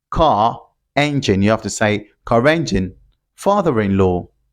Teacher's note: we have a vowel word immediately after that sound, after the sound r, you have to produce it, you have to pronounce it and link it. For example, car engine, car engine, you have to say car engine, father-in-law.